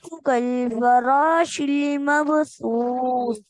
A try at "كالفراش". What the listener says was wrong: रा रा को मोटा पढ़े